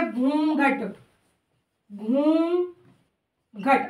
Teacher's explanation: और देखो ऊ क्या है, ऊ तो आपका स्वर है, लेकिन ऊ का क्या कर दिया गया, जैसे मैंने बताया कि स्वर का उच्चारण मुख के साथ साथ नाक से हो गया, तो हमने किसका प्रयोग किया, जब ऊ का हमने ऊ कर दिया तो हमने किसका प्रयोग किया, चंद्र बिंदु का, अर्थात ये अनुनासिका है।